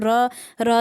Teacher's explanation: र देखो लुंठित भी है, सघोष भी है, वत्सर्य भी है, अल्प प्राण व्यंजन भी है।